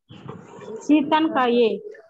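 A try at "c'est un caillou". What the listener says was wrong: Not an, it has to be a. Seta Kaiye. Like in aunt we say. Seta. Nasal sound. Seta Kaiye. So, the T will, you have to link the word here.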